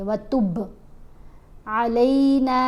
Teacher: बा के ऊपर कलकला करेंगे, व तुब नहीं पढ़ेंगे, व तुब अलैना इन्नका अंतत तव्वाबुर रहीम।